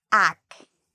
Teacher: The first part, ac, so the AC actually has a K sound, and it's the part we say louder and longer.